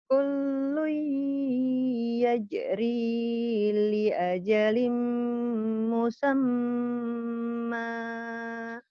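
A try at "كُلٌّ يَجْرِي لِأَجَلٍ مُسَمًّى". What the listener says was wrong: Udah bagus cuman nadanya belum berani lepas. Kullu yajri li ajalin musamma.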